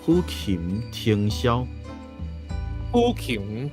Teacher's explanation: 的那个其实也是鼻音，它也是会有鼻音共鸣，所以它会有不同的鼻音共鸣的类型比较多，所以会跟华语的丰富度来说更多。就是我觉得如果这样子听起来会觉得说，你学台语的话呢，你对于声音的掌握程度可能会更高，因为你的种类多嘛，比华语的单一性差很多，所以我觉得会有更多的掌握度吧。对，等于是台语比较复杂的意思啊。你把它掌握起来之后，我觉得学华语就比较可能就更容易一点。对，因为你知道你的声音怎么跑，你的声音是怎么跑出来的。对啊。好，继续下一句喽。好，呼琴，那 这个琴字它刚好前面呢有气音，然后后面是闭口的▁M▁字 · 这个琴字它刚好前面呢有气音 ，然后后面是闭口的▁M▁字，所以它是一个蛮重要的字。你可以试试看，呼琴听箫。呼琴